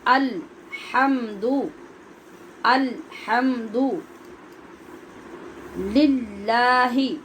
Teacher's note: الحمد، ال نہیں پڑھنا، حمد نہیں پڑھنا، ہم نے ہا پڑھنا ہے، ہا اپنے مخرج سے وسط حلق سے نکالنا ہے، اور لام پہ قلقلہ نہیں کرنا، اس کی آواز اپنے مخرج میں رک جائے گی